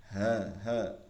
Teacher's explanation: থেকে বুকের দিকের একদম বুকের দিকে যেখানে ওইটা হলকের শুরু এই গলার কণ্ঠার ওইখান থেকে উচ্চারণ করতে হবে গম্ভীর আওয়াজে সিংহ যেভাবে গর্জন করে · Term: গোল হা